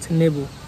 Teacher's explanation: আচ্ছা, আমরা এক্সাম্পল হিসেবে যদি দেখি আমরা লেবু যে শব্দটা আছে, এই মাঝে মাঝে আমরা ধ্বনি পরিবর্তনের মাধ্যমে সেই লেবুর লটাকে বাদ দিয়ে দন্ত ন বসিয়ে আমরা উচ্চারণ করি নেবু। এই যে লেবু থেকে নেবু, এটা এক ধরনের ব্যঞ্জন বিকৃতি।